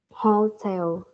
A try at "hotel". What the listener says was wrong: Đúng rồi, nhưng mà con phải nhấn được chữ tell cho cô, không phải là hole mà là hotel, hotel.